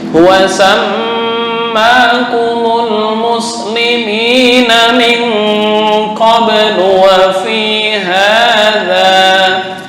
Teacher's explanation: Dengung di mim, ya, ditekan dua harokat.